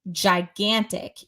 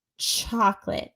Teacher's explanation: j is voiced. So, for example, when you say gigantic, you need to use your voice versus chocolate doesn't use the voice